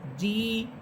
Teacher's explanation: জিম এটা জিহ্বার মধ্যখান উপরের তালুর সাথে লাগবে, শক্ত হরফ, এবং জের দিয়ে পড়লে ঠোঁট দুদিকে ছড়িয়ে পড়বেন।